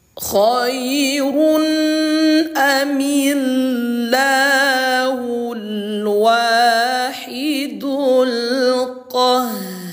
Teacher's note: oh ternyata ro-nya dibaca tebal gitu, ya